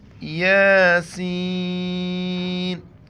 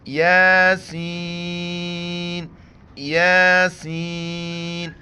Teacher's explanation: یاسین، یا کے اوپر کڑا زبر ہے، ایک الف کی مقدار کھینچنا ہے، اور سین کے اوپر مد ہے، 4 الف کی مقدار کھینچیں گے